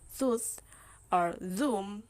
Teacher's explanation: Your tongue is touching your alveolar ridge when you make the word tooth or zoom.